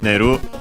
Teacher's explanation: the intransitive form is neru, should also be unaccented. Yes, it is unaccented.